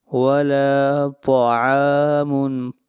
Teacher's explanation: ولا لام کو کھینچ کر پڑھیں گے ایک الف کے برابر، یہاں پر الف مدہ ہے۔ ولا طعام، طا کو موٹا پڑھیں گے، طا حروف مستعلیہ میں سے ہے۔ ولا طعام، عین کو کھینچ کر پڑھیں گے ایک الف کے برابر، یہاں پر الف مدہ ہے۔